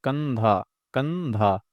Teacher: कंधा कंधा सिर्फ नाक का इस्तेमाल हो रहा है। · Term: अनुस्वार